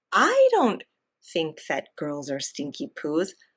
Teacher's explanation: he is emphasizing that capital I because it's a contrast